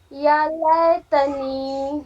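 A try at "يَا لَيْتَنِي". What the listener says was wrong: جو اے ہے نا، اے ہندی والا اینک، یہ اے کی آواز نہیں آنا چاہیے۔ جو یا لین ہے نا، جو اے ہے اس کی آواز نہیں آنی چاہیے۔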